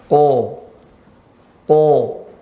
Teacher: qaf ya tempatnya pangkal lidah bertemu ya dengan langit lunak bagian dalam, tapi agak ke depan